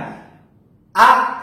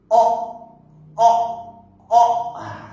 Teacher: Misalkan kita mengucapkan huruf hamzah yang berbunyi a. Hamzah itu memiliki tempat keluar di tenggorokan bawah